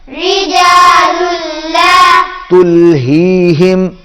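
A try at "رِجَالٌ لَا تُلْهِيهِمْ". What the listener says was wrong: यहां पर लाम जो है उसको मोटा नहीं करना।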